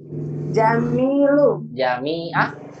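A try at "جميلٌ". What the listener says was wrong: Lu atau lun? Nggak bertanwin? Saya kira tadi Jamilu tidak bertanwin.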